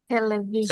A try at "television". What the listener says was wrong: টেলিভিশন। ভিশনটা stress টাইপের হয়ে যাচ্ছে। টেলিভিশন, টেলিভিশন।